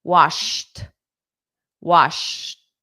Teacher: We go from the sh which your voice is up or your lips are out sh. And then you go into a t position for the ed. · Washed is a t for the ed sound.